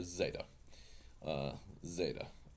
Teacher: technically it's more of a DZ sound